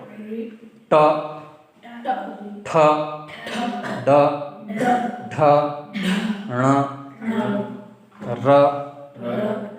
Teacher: ट ठ ड ढ ण र और श उच्चारण मूर्धा स्थान अर्थात तालू के ऊपर से करना चाहिए